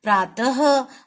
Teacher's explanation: ह की आवाज आ रही है ना, त के साथ ह की आवाज। तो जब ये दोनों ये लग गए, बिंदु लग गए, यानी विसर्ग लग गया, तो ये बन गया प्रातः। · जब विसर्ग का उच्चारण करते हैं तो आवाज आती है अह की आती है, अह। जैसे अब इसको पढ़ेंगे, प्रातः, ह की आवाज आ रही है ना, त के साथ ह की आवाज।